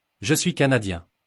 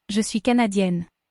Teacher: The end of the masculine Canadien sounds more like ya, and at the end of the feminine Canadien, you can hear the EN.